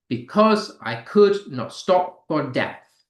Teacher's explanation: There is unstressed stressed unstressed stressed da da da da dum four times. · iambic tetrameter, where it's like unstressed, stressed 4 times.